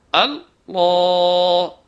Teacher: زبان گول ہو کر اوپر کے تالو سے ملے گی، آواز بھاری ہو جائے گی، الفاظ کو منہ بھر کر ادا کریں گے. · اور اس کو توڑ توڑ کے الگ کر کے نہیں پڑھنا ہے، یعنی اللہ نہیں کرنا ہے بلکہ اللہ شدت سے ملانا ہے تاکہ یہ تشدید کی آواز بنے، نہ کہ جزم کی آواز. اس کے علاوہ خیال یہ رکھنا ہے کہ اس میں جو پہلے الف آیا ہے یعنی حمزہ آیا ہے اس کو بھاری نہ کریں، یعنی اللہ کرنا ہے، او الف کو بھاری کرنے کی کوشش نہ کریں ورنہ آواز خراب ہو جائے گی.